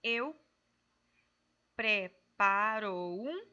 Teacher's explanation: juntou, né, a vogal da última sílaba com a vogal da próxima palavra.